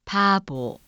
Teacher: 조금 낯설게 들리죠 그 이유는 바로이 비읍 소리가 유성음화 되었기 때문입니다 비읍 소리가 유성음 사이에 나타나면 유성음 화가 됩니다 · 비읍 소리는 보통 무성음으로 발음되지 유성음 사이에 나타날 때는 유성음으로 발음이 됩니다 우리는 같은 비읍이라 인지하지만 실제로는 다른 발음인 것입니다 다음은 영어의 p